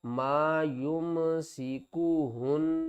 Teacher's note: نون مشدد ہے، گنہ کریں گے، آواز ناک سے آئے گی